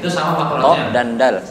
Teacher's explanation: Sama-sama ujung lidah bertemu dengan pangkal gigi seri atas.